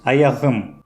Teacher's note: буква «к» изменяется на «х» и звучит более звонко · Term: регрессивную ассимиляцию